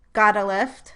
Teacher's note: the t at the end of got is a flap